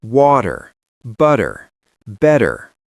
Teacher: you must master the flap T. The T that sounds like a D.